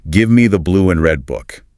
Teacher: the three extra unstressed words me, the blue and red in the second example are just severely crushed to maintain that temporal regularity